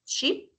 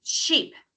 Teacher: the e in here the sound is short and in the second sheep the sound is longer